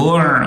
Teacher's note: عین حلق سے نکالیں گے